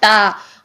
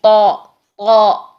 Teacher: आवाज का डायरेक्शन पीछे की तरफ फेंकेंगे, जिससे हमारी मोटी आवाज रहेगी तौ। तौ, ये जुबान पीछे से ऊपर को उठाकर फिर हम आवाज को बैक साइड पर फेंकने की कोशिश करेंगे तो हमारा निकलेगा तौ।